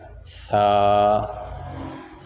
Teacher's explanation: ثا جو ہے زبان کی نوک اور اوپر والے دونوں دانتوں کی نوک، ان دونوں کو آپس میں لگائیں گے تو وہاں سے ثا ادا ہوگا، اور اس میں خیال رکھنا ہے کہ سیٹی نہیں لگنی چاہیے۔